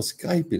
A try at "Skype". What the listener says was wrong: It's not Skype, it's just called Skype. You don't pronounce the E. No, it's not.